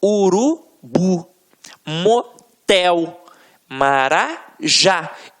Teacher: a pronúncia da última sílaba ficaram mais forte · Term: oxítona